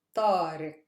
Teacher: Stress is on ta, because that's not a super heavy syllable.